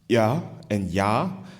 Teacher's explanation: some of the words, for example, ya and ya, one with a glottal sound and one without